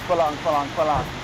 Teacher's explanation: They don't use the R sound in words in Lao.